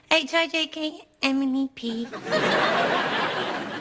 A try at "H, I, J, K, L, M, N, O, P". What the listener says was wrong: You're saying Emily, aren't you? but it's wrong. It's got to be fast to rhyme.